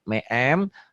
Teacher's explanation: Ini bunyi N, tanwin juga N. Bunyi N-nya berubah menjadi M. Tapi ada bindeng sedikit agak samar. Itu namanya iklab.